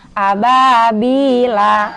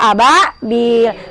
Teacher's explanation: Kagak boleh dibaca ababila kalau berhenti. Harus dibaca ababil. Karena dia hukumnya mad arid lis sukun.